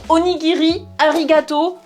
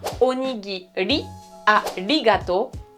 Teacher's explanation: C'est un espèce de R roulé qui est moins fort qu'en espagnol, mais c'est pas un vrai R. Donc onigiri, arigato, on oublie, les japonais ne te comprendront pas, c'est bien onigiri, arigato, une espèce de R tout petit peu roulé.